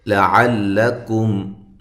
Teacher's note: کم، کاف کو باریک، میم ساکن کا اظہار۔ لعلکم، عین کو واضح کریں، لام کو باریک